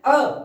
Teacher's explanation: ना तो जीभ आगे की तरफ आई ना जीभ पीछे की तरफ गई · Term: केंद्रीय मध्य स्वर